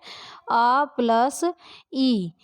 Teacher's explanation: आ का उच्चारण हम कंठ से करते हैं जबकि ई का उच्चारण तालु से करते हैं, इसीलिए इसे कंठ तालव्य ध्वनि कहते हैं